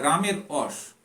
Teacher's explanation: আবার কোন কোন ক্ষেত্রে দেখা যায় র কিন্তু অ রূপে উচ্চারিত হচ্ছে